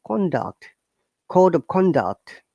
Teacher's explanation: a noun is the intonation should be higher to down